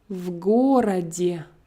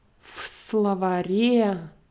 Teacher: I will pronounce it voiced if it comes before voiced consonant. I will pronounce it as f before the voiceless consonant.